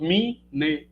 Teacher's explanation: que vem de memória mesmo quando a gente tenta pronunciar que a gente faz a epêntese do izinho depois do M Então você acaba fazendo duas eh duas sílabas mi ne etc